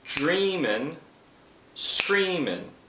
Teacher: feminine Rhymes so the first initial syllable is stressed